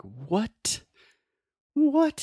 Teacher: if I really articulate that T sound it is like I am demonstrating something like disbelief or I'm so surprised like what what in the world but normally in normal conversation